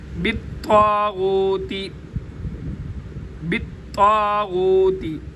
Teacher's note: طا بھی موٹا ہوگا کیونکہ طا حروف مستعلیہ میں سے ہے, ان حروف میں سے ہے جن کو موٹا کر کے ادا کیا جاتا ہے.